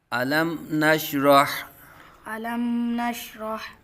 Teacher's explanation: میم ساکن میں غنہ نہیں کریں گے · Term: اظہار شفوی